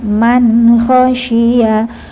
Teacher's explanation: khnya getar. Kho harus ngorok, harus digetarkan.